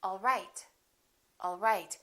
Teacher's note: My pitch goes down at the end for a statement